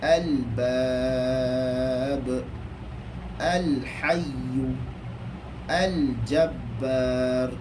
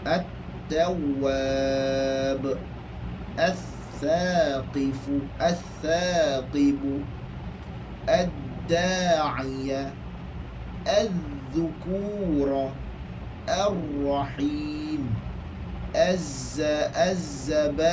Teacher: Selepas alif lam aja ada sabdu. Walaupun ada untuk lam, tapi kita tidak akan baca lam. Kita terus baca huruf yang bersama. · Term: idgham syamsi